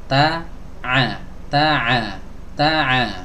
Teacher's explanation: hams di juga memiliki sifat sidah yang artinya suaranya tidak boleh dialirkan